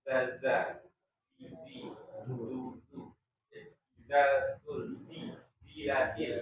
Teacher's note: Nah, Zai zo ya, zo ya, za zi zu zu, za zul zi zilatil ya. Gitu ya, karakter yang membedakan adalah dia sifat desisnya kayak lebah